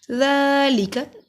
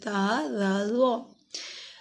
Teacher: ذال نرمی والا حروف ہے، ذال پہ سٹی کی آواز نہیں آتی. ذا ذال زوا کو ادا کرنے کے لیے زبان کی نوک کو دو کناروں سے لگائیے.